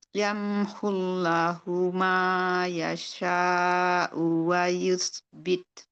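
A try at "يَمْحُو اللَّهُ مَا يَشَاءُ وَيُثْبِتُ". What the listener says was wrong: Coba Allahnya ditebalin lagi. yamhullahu, jangan yamhullahu, jangan gitu. Yamhullahu.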